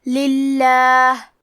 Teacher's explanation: لام کا حکم ہے ترقیق، تو ہم حرف اللام کو پتلی آواز میں پڑھیں گے